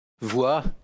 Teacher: en s'appuyant sur une consonne, V, pour mieux s'ouvrir sur une semi-voyelle, W, et fleurir sur le A final